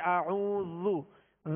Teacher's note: زال کو نرمی کے ساتھ پڑھیں گے، زال پر پیش ہے، اس کو کھینچیں گے نہیں